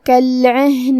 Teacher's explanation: کلمت کالعہن میں یہاں حرف العین ہے. عین کو حلق کے درمیان والے حصے سے ادا کرنا ہے · عین کو حلق کے درمیان والے حصے سے ادا کرنا ہے. ہا کی ادائیگی حلق کے نیچے والے حصے سے ہے